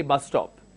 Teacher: when I am pronouncing I removed one s and I just say bus stop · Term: linking